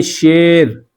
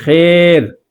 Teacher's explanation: را کے زبر کو زیر کی طرف مائل کرنا اور اس کے بعد کا جو الف ہے اس کو یا کی طرف مائل کرنا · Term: امالۃ الرا